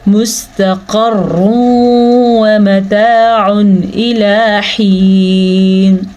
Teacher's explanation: ان دونوں کے درمیان میں ادغام بالغنہ کا قاعدہ ہو رہا ہے، کیونکہ ہمارے پاس ہے یہاں پہ تنوین، یعنی کہ دو پیش. تنوین کے بعد آیا ہوا ہے واؤ، تو ادغام ان دونوں کو آپس میں ملا دیں گے اور غنے کے ساتھ ملائیں گے